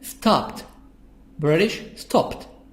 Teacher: So here the D, ED, I make the D, T. I read it T sound because I have P at the end. The sound of P sound at the end of the verb.